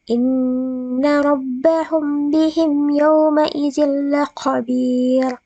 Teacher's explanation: cara membacanya harus samar-samar di bibir dan didengungkan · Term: Ikhfa Syafawi